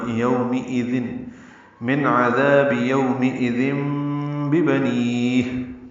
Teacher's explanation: زال میں تنوین کے بعد با آنے کی وجہ سے اقلاب کریں گے. یومئذ نون کی آواز ختم ہو جائے گی. میم کی آواز پڑھیں گے. میم بن جائے گی.